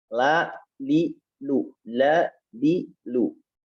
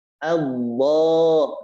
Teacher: cara mengucapkan lam ya tarqiq dengan tidak mengangkat pangkal lidah